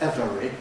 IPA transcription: ˈevəri